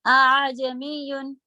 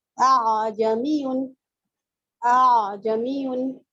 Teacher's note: दोनों पे फतहा देना है लेकिन आवाज ऊंची नीची होगी। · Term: तस्हील